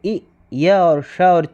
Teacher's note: इ, य और श और च में तालव्य वर्ण है